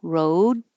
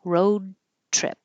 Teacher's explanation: You hold the first D, road, and then release the airflow with the T